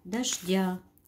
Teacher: ударение падает на второй слог